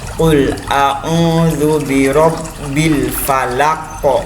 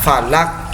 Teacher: Kemudian karena ada di belakang kalimat, di akhir kalimat, maka ini pantulannya kuat, disebut dengan qalqalah kubra. Qul a'udzu birabbil falaq, bukan falak ya, falak kok gitu.